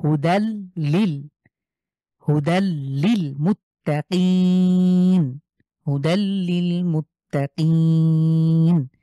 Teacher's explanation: লাম, এখানে দালের উপরে তানভিন রয়েছে, এরপরে লাম আছে। সুতরাং আমরা গুন্না ছাড়া মিলিয়ে স্পষ্ট করে গুন্না ছাড়া পড়বো। · শেষে আমরা 3 আলিফ টানবো।